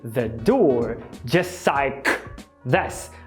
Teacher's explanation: Apagando o T do just e o L do like